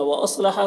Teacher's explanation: صاد کو پر پڑھیں گے، یہ حروف مستعلیہ میں سے